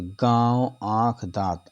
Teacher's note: ऐसे स्वरों का उच्चारण नाक और मुह से होता है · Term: अनुनासिक